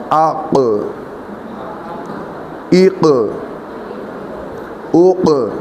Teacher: جگہ نرم بھی ہوتی ہے، ویسے بھی نرم ہوتی ہے۔ یہ زبان کی جڑ جب اس نرم تالو کے ساتھ لگتی ہے تو یہ آواز نکلتی ہے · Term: حروف لہویہ